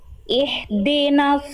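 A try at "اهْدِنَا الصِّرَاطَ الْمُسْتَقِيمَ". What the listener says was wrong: Jangan jangan H kecil. H besar. Ihdinas sirata. Dari H besar dari pangkat tenggorokan Bunda. Ihdinas siratal mustaqim.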